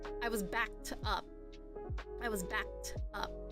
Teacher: So the expression backed up, the K sound is also a voiceless sound.